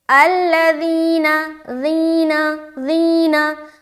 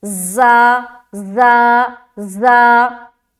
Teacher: ज़ाल जो हर्फ है ना ये बारीक हर्फ है और नरमी के साथ अदा किया जाता है, और ज़ा जो है ना ये भी बारीक हर्फ है लेकिन ये सख्ती के साथ अदा किया जाता है, और ज़ाल बगैर सीटी के अदा होता है जबकि ज़ा सीटी के साथ अदा होता है क्योंकि ज़ा हर्फ के अंदर हर्फ सफीरिया वाली सिफत पाई जाती है।